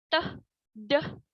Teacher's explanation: Nah, saat kita mengucapkan teh dan deh, udara itu tidak terus mengalir, tidak seperti z dan sh. Dan di akhir pengucapannya itu ada sedikit letupan, teh, deh, seperti itu. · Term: stops